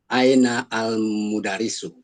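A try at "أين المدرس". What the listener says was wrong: Ainal gitu langsung ya. Ini disukun ya, dihidupkan akhirnya. Ainal mudarrisu.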